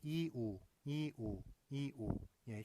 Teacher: 이에서 우로 얘기할 때 발음할 때 혀가 좀 뒤로 후퇴하는 거 느껴지시나요?